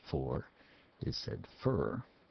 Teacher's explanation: F, using the letter F for the sound in for and from. Often in USA English, for is said fur.